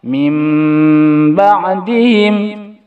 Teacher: nun sukun atau tanwin bertemu huruf ba maka bunyi nun sukun atau tanwin diganti bunyi mim sukun disertai dengung